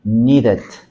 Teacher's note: tenemos un sonido de flap T, en este caso flap D, porque está entre vocales. Tanto la letra T como la D, cuando nosotros veamos que está en medio de vocales, vamos a utilizar este sonido flap.